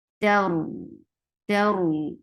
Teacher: da is 2 counts long, and the dad is heavy